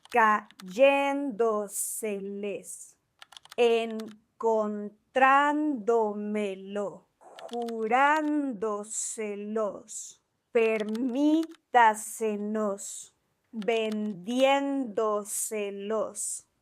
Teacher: These are words that have the stress on the syllable before the antepenultimate. That's before the third to last syllable. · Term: sobresdrújulas